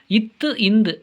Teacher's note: இத்து, இந்து ஆகிய இரு மெய்களும் மேல்வாய் பல்லின் அடியை நாக்கின் நுனி பொருந்துவதால் பிறக்கின்றன